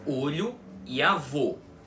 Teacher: aquele som bem comum do o na língua portuguesa fechado que é o que aparece em muitíssimas outras posições de palavras na língua, como por exemplo nas palavras olho e avô, tá? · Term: som fechado